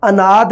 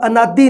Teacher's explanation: ਇਹ ਸ਼ਬਦ ਦੇ ਅਖੀਰ ਦੇ ਵਿੱਚ ਲਘੂ ਸਵਰ ਹੈ, ਇਹ ਉਚਾਰਿਆ ਨਹੀਂ ਜਾਊਗਾ, ਅਨਾਦ ਉਚਾਰਿਆ ਜਾਊਗਾ, ਅਨਾਦੀ ਨਹੀਂ ਉਚਾਰਿਆ ਜਾਊਗਾ।